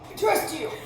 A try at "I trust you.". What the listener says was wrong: That was in your throat. Look up with your eyes.